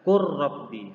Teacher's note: Yang awalnya qul rabbi dibaca qur rabbi. Nah, lamnya tidak dibaca karena lamnya sudah dimasukkan ke ra. Qur rabbi.